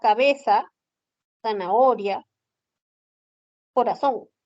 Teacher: No usamos el sonido de la interdental. Ese uso de la S, ese es el ceseo